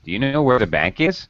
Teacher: Yes, you're definitely going to rise on is. It's a yes or no question. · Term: final rising